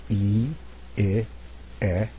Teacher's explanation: again the jaw drops a little bit more for E so if I do vowels 1 2 and three I go e i e and each time my mouth opens a little bit more